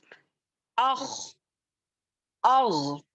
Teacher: तो इस तरीके से खा और गैन जो है अदनल हलक से निकलने वाले हैं जी, अपर टॉप मोस्ट जी।